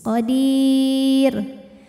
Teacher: rnya apabila berhenti dibaca secara tarqik Kenapa karena rnya pasti disukunkan kebetulan huruf sebelumnya Ya Sukun ya maka rnya pasti tipis Qadir tapi Kalau diteruskan karena rnya pasti masih ada harakat damahnya · Kemudian ra-nya apabila berhenti dibaca secara tarqiq. Kenapa? Karena ra-nya pasti disukunkan.